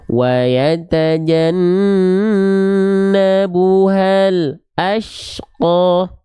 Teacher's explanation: antara bunyi lam sukun dengan huruf berikutnya ada jeda walaupun hanya sejenak, ada jeda hening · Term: terputus suaranya